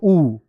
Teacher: होठ भी बन रहे और दीर्घ भी हो। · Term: ओष्ठ दीर्घ